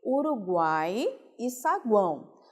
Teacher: A palavra Uruguai, essa última sílaba, nós temos aí três vogais nessa mesma sílaba, seguindo a sequência que foi colocada, semivogal, vogal e semivogal. E a palavra saguão também, esse guão, semivogal, vogal e semivogal. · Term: tritongo